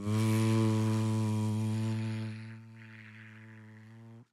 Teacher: It's the same as the sound of F, except it has vibration. It has voice. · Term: the sound of V